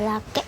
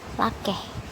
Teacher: Nah, ini contohnya di nomor data 2173 ada lake dan lakeh. Nah, ini bunyi yang beda itu glottal stop atau bunyi hambat ya, dengan bunyi h.